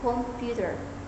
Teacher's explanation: clapping for the word computer would emphasize the second syllable computer.